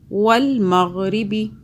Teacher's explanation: را جو ہے باریک ہو رہا ہے یہاں کیونکہ دونوں کے نیچے زیر ہے